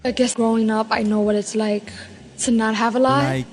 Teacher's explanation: would find in a word like like love Leaf right so New York Latino English speakers have a particularly light L